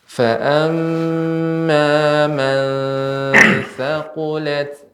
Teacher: pengucapan nun sukun bertemu dengan za, ikhfa, jangan terlalu pendek